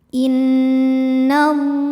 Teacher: Karena huruf lam berbaris fathah panjang, maka cara bacanya panjang lamnya 2 harokat. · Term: mad tabi'i muqaddar